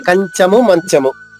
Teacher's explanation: చ దగ్గర న్ వస్తుంది